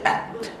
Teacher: hams pada ta dan pada kaf, dia hams yang minimum. Okey, at dia tak sama macam hams pada huruf-huruf selain ta dengan kaf. · Ta apabila dia mati ada angin, ada hams tapi sikit.